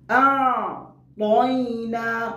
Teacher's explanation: ত এই হরফকে মোটা করে উচ্চারণ করতে হবে, কারণ এটা হরফুল ইস্তিআলার হরফ বিদায় এটাকে তাফখীম করে উচ্চারণ করতে হবে, মোটা করে উচ্চারণ করতে হবে।